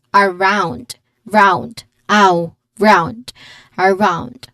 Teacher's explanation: Around has stress on the second syllable, round, around, which also has a clear diphthong.